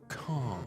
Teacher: The sound of car is just one very long vowel where the R the R isn't pronounced. And the reason this is so easy to do is because all you have to do to produce the British R is not to produce it at all, but instead make the vowel in front of it really long.